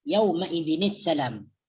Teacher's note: Maka macam mana cara membacanya? Yaitu sukun yang pertama itu dibariskan bawah, dibariskan kasrah menjadi yauma idzinis salam